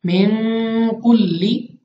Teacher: काफ हरूफ इख्फा में से है, तो हमने यहाँ पे गुन्ना करके पढ़ना है